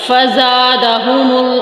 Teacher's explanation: زا میں سیٹی کی آواز آئے گی · फ जा में सीठी की आवाज आएगी